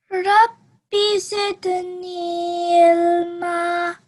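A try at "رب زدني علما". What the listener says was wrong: Ilma, yeah, ayn has to be pronounced.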